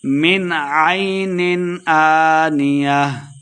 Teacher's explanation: من یہاں پہ اظہار کا قاعدہ ہے، غنہ نہیں کریں گے۔